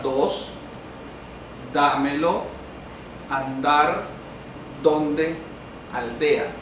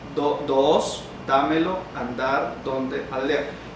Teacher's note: la oclusiva dental o alveolar sonora